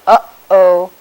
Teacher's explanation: when we say something like uh-oh, there's a vowel followed by a glottal stop